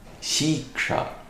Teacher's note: The elongation of this vowel, the dirgha nature, Dairghyam, in the E, in the Shiksha, is Chandasam.